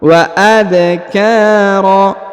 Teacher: huruf ka dipanjangkan 2 harokat karena terdapat alif di depannya. Kemudian huruf ro tanwin an berubah menjadi a ya, atau ro, bukan lagi ron, karena kita berhenti di sini ya, di ujung bacaan ini.